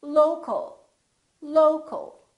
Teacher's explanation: We reduce the second syllable and it becomes the local, local. So you see OL and AL sound exactly the same because they're both reduced syllables.